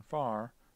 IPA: faɹ